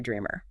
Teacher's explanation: dreamer has the emphasis on the first syllable